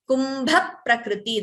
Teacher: There is a dvitvam. Extra p is heard before pra.